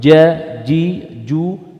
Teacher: huruf Jim adalah huruf yang tidak boleh keluar desisan angin enggak boleh J J enggak boleh Jakarta enggak boleh ja jadi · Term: huruf syiddah